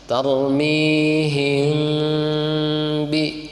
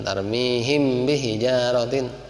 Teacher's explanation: mim mati ketemu ba, ikhfa, maka itu ditahan, Pak. Tarmihim bi, jadi jangan tarmihim bi hijaratin, itu harus ditahan dulu, gitu, karena itu ada ikhfanya, ya.